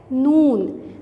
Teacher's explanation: ज़बान के जो हमारे किनारे हैं वो और साथ में ऊपर जो हमारे दांतों के मसूड़े हैं वहाँ के टकराने से नून की आवाज़ आती है